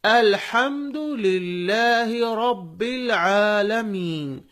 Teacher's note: ہا اندر سے نکالیے اور را کو موٹا پڑھیے اور عین کو بھی اندر سے نکالیے، آ.